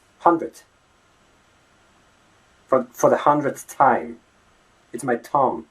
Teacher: the unvoiced version, the TH, the th sound, as in the word thumb, right? It becomes T. It's more like T.